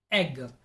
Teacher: the tongue is LAX and means it's loosened up and is resting in the mouth